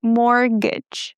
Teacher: Guys, the T is silent and we don't say mortgage, okay?